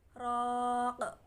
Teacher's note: Kemudian qaf di sini raq. Qalqalah kubro dibaca tebal sebab qalqalah kubro berada di akhir kalimat atau waqaf.